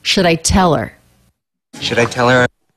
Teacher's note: Tell begins with a true T because that starts a stressed syllable.